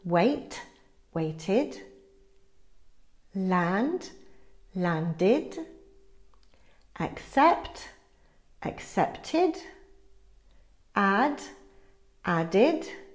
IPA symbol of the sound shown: id